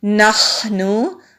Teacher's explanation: خا حروف ہلکی ہے، حلق سے نکالیں گے اور سانس کو جاری رکھتے ہوئے پڑھیں گے، جلدی سے نہیں پڑھیں گے۔